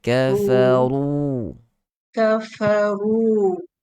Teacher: Sebab fa itu adalah huruf yang dibaca dengan nipis, kan? Fa nipis, ru itu yang tebal.